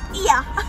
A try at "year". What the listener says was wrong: So she says, yeah, but we say, year.